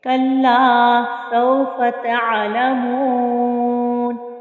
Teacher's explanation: کہ واو سے پہلے والے حرف پہ چونکہ پیش ہے تو اس کو ہم ایک الف کی مقدار کے برابر کھینچ کے پڑھیں گے، اور پھر جب ہم وقف کریں گے تو 3 الف کی مقدار کے برابر کھینچ کر وقف کریں گے۔ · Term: واو مدہ